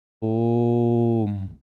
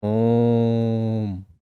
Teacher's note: बीच वाले वर्ण को खींच कर बोलेंगे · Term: प्लुत स्वर